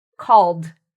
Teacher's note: if you see a verb ending in an L sound, like call, ed then becomes pronounced like a d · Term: d sound